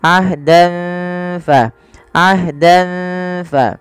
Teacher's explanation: Kemudian ahdan falan yukhlifallahu ahdahu am taqulun, pada lafal dan ketemu fa, samarkan tanwinnya kepada huruf fa karena ia bacaan ikhfa yang dimana ada fathatain bertemu dengan huruf fa.